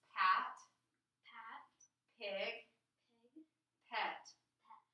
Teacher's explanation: Okay, so it kind of closed and then it opened up, right? Okay, does the air come out in a stream or a puff? A puff. What part of your mouth makes the puff? My lips. Lips. So this sound is called a lip puffer.